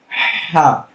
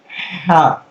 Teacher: حلق سے ہا، ہلکا ہوا کے ساتھ